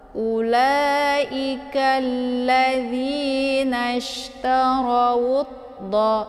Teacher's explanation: Jadi jangan ditipiskan. Cara baca tafkhimnya yaitu ditebalkan ra-nya, ujung lidahnya terangkat ke langit. · Jadi tanpa harus dibaca alif lamnya ya. Alif lamnya itu tidak dibaca lagi, langsung u-nya ke dalam huruf dhad. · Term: alif lam asyamsiyah